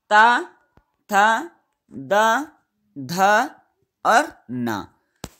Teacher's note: तवर्ग जो है वो दंत का उच्चारण स्थान होता है